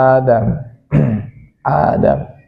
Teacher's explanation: Mad badal panjangnya itu 2 harkat, ya.